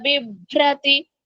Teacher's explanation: భ మహాప్రాణము రకారము తీవ్రనాదం భకు రకారం ఉంది